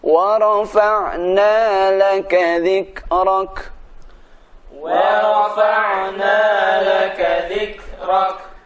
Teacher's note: Ada sedikit desis huruf kaf mati.